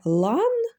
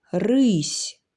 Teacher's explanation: м'який знак не передає ніякого звуку але пом'якшує попередній приголосний